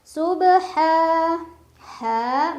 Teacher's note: karena ada fathah berdiri di atas huruf ha dibaca panjang dua harakat